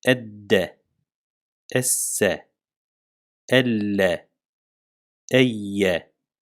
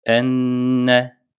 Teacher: Evet dikkat ederseniz Hem biraz daha fazla tuttum Enne hem de ses genizden aktı yani gunneli olarak çıktı bu aslında nun ve mim harfinin sesinin zaten genizden akmasından kaynaklanıyor · şeddeli olarak okuyup geçiyoruz tutmadan ya da gunne yapmıyoruz